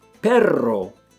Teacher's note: if there are two RS together in the middle of a word you Trill that R too